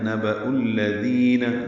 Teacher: حمزہ واو کی شکل میں، اس کو الذین کے لام سے ملانا ہے. نبأ الذین دال نرمی سے پڑھنا ہے، 2 حرکات لمبا کرنا ہے.